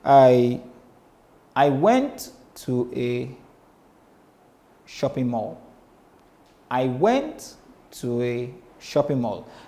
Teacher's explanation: Now you discover that the statement to a was low, very low. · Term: Pyrrhic meter